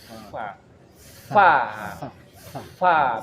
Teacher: Tapi dia gigi. Dan huruf fa ini udaranya deras sekali. Justru udara dulu yang keluar baru terucap hurufnya. · perut bibir bawah menyentuh ujung gigi seri depan atas